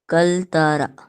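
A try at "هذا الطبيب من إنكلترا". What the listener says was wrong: And there is one shadda here actually. Inkaltarra.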